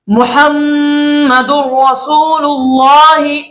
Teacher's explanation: यहां पर हमने दाल को रा के साथ मिलाया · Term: इदगाम बिला गुन्ना